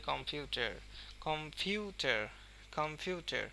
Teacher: Stress দেওয়া হয়েছে পিউ এর উপরে।